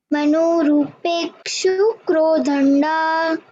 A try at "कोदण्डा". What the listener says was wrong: Not crow. Ko. Only ko. Kodanda. Manorupekshu kodanda. And not rupeshu. It is rupekshu.